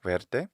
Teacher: the Latin V is consistently the English W sound at beginning of words like the word for green